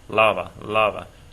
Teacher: you should hear that the stress is over that A